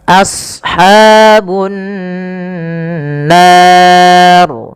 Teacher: huruf sad tebal, jangan as, jangan sin, tapi as ya, a-nya tipis, sadnya tebal. Karena sad punya sifat huruf isti'ala dan idbaq.